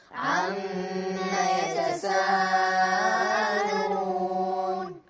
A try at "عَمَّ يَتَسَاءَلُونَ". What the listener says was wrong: الميم عليها فتحة بس بدون ألف. عم يتساءلون.